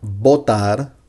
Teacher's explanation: in Latin American Spanish and at least in Colombia, we don't make differences between the V and the B sound. We just say B, both of them.